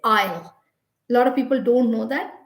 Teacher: The S is completely silent, and we just say aisle.